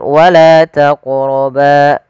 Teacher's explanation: maka kita hukumi dengan bacaan qalqalah yaitu harus memantul.